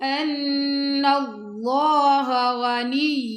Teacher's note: اب یہاں پہ دیکھیں ان، یہاں پہ گناہ کریں گے اور نون کو اللہ کی لام سے ملا دیں گے، اور اللہ کی لام موٹی پڑی جائے گی کیونکہ اللہ کی لام سے پہلے زبر آ رہا ہے